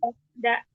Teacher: Bukan di langit-langit tengah ya, di tempat tumbuh gigi. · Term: dalnya